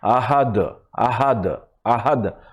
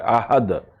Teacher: দাল আবার একটু ইকো সাউন্ড হয়